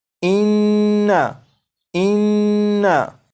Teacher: ये आवाज़ नाक में भी जा रही है, यानी गुन्ना भी हो रहा है, और इसकी मिकदार 1 अलिफ के बराबर भी हो रही है।